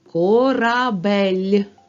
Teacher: перший звук к твердий приголосний о голосний р твердий приголосний а голосний б твердий приголосний е голосний